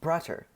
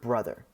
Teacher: Not only does the b sound change to a b, but also the t sound changes to a th in the English word, which is an example of the first rule of Grimm's Law, where voiceless stops become voiceless fricatives.